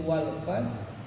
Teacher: pengucapannya adalah mengucapkan huruf ha dari tengah tenggorokan tetapi tidak dibunyikan